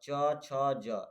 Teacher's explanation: जैसे आप च छ जब बोलेंगे तो तालु से बोलेंगे